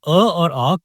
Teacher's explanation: इन स्वरों को बोलते समय ध्वनि गले से निकलती है। यहां जीभ का कोई विशेष प्रयास नहीं होता। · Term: कंठ स्वर